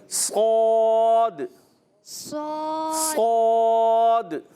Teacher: صاد بغیر ہونٹ گول کے